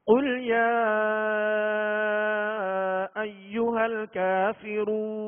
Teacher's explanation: یا پر جو مد ہے اس کو دراز کریں گے، کھینچیں گے